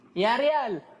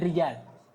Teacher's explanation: Demikian pula di antara kesalahan yang terjadi mengganti huruf jim dengan ya.